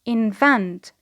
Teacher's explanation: because it is a verb, the stress is on the second syllable